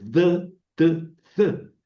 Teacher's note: Porque en realidad deberían de llamarse eh, linguodentales, porque se pronuncian con la lengua y los dientes